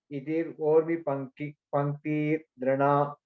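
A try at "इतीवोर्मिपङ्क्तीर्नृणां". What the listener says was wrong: Iti vormi panktir nrinam. Iti vormi. Long vowel. Nrinam. அதாவது இத்தீர் இல்ல இதி ஓர்மி இதி ஓர்மி பங்கீர் ரிணாம்.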